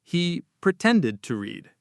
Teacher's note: So we don't say them both strongly. The first D sound almost disappears. It becomes a very soft pretended to.